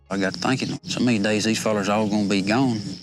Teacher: 충청도 사투리 되게 막 느릿하고 말할 때 위아래로 꿀렁거리는 느낌이 들잖아요. 텍사스 억양도 비슷해요.